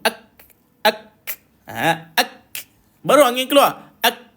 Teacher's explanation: Cara dia adalah matikan K pada kaf tu dulu, baru angin keluar. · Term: huruf hamas